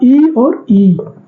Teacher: तालु से आ रहा, मतलब जो जीभ है वो थोड़े ऐसे सिकुड़ जा रही है